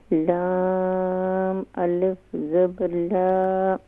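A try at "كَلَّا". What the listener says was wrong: الف نہیں ہوگا، الف.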